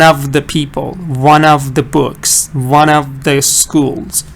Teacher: sometimes the F sound can be pronounced like the V sound